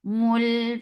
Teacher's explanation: Mul for dhamma circle ellipse attached with lam. Lam will get sifa of tawassut, and tawassut is medium flow of sound.